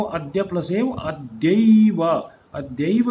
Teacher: जैसे यहाँ पर आप देख सकते हैं अद्यैव, अद्य प्लस एव, दो शब्द हैं अद्य प्लस एव, ये द्य के अंदर अ की साउंड है और एव का ए है। जब ये दोनों शब्द आपस में, दोनों ध्वनि आपस में मिली तो ऐ की एक आवाज बदल गई जो आ और ए से भिन्न है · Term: संधि